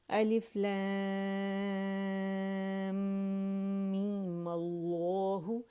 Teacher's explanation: می کو 2 کاؤنٹ کھینچا، پھر میم پہ ہم نے کیا کیا؟ فتحہ لگا کے ماللہ کر دی، ماللہ. اور ماللہ کو بھی زیادہ کھینچنا نہیں ہے، ٹھیک ہے.